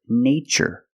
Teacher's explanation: in this spelling pattern T is pronounced with the CH sound like chicken